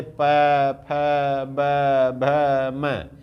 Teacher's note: जो ओठ के माध्यम से जो वर्ण बोले जाते हैं उन्हें ओष्ठ वर्ण कहते हैं